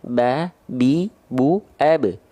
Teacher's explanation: ba memang betul dari asyafatain, ya, dari bibir makhrajnya. Tapi bukan berarti dilipat macam tuh.